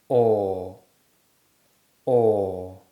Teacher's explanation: this sound is produced with strongly rounded lips and when we do this the back of the tongue naturally Rises this gives the sound its technical name the open mid backgrounded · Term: or sound, OR sound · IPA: /ɔ:/